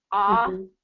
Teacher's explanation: the vibration kind of drops because the the jaw drops ah we get a little bit lower vibration